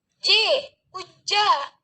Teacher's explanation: approximant atau hampiran dan tepat artikulasinya di palatal